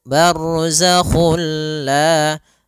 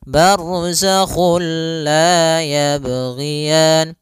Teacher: kita memasukkannya secara utuh, secara seluruhan kepada huruf lam, sehingga tidak menyisakan sedikit daripada bunyi huruf nunnya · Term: idgham bila gunnah